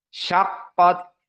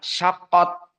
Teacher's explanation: makna dari Hames di saat disukunkan ta harus ada nafas yang keluar Jangan ditelan seperti syaqqot keluar syaqqot tidak ditelan syaqot Diam sqot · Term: alhams